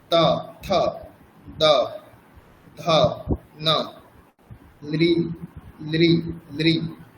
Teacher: ত বর্গের স্থান হচ্ছে দন্ত, মানে জিহ্বা দন্তে এসে স্পর্শ করবে, দন্তকে স্পর্শ করবে। যেমন ত থ, দাঁত বলতে ওপরের দাঁত, কিন্তু ওপরের দাঁত।